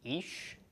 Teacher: chiric followed by a yod makes long E sound, followed by the sh of the sheen. So ish is the pronunciation of this.